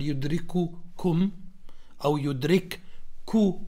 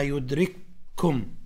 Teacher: فهذا مثاله بارك الله فيكم لما مثلا يأتي حرف الكاف في قوله تعالى يدرك وبعدين في كاف أخرى وميم، فالأولى ساكنة يدرككم الموت، فأنت ما تقول يدرككم أو يدرك كوم إنما يدرككم فتصبح كأنه حرف مشدد